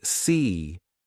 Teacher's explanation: notice how your lips are spread wide and your tongue is near the top of your mouth